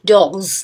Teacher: G is voice velar plosive. Since it is voice, it affects the s plural ending to be pronounced as voice consonant z. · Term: voice alveolar fricative